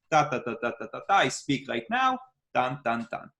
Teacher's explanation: if I switch to an Israeli accent, you notice that every syllable has its own place